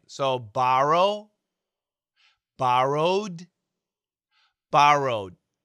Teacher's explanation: But Americans, we stop the D.